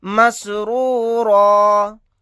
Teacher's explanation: را کو بھی موٹا یعنی پر پڑھیں گے اور را الف کے ساتھ ایک زبر کو پڑھیں گے